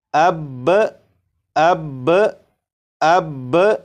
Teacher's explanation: وقف کی صورت میں با کے اوپر جو زبر ہے، زبر کو نہیں پڑھیں گے، صرف تشدید کو پڑھیں گے۔ تو وقف میں اسے اس طرح پڑھیں گے جیسے اب اب اب۔